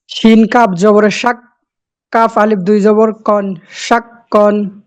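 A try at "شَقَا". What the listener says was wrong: কপ কপটা উচ্চ উচ্চারণ কাপ হয়ে গেছে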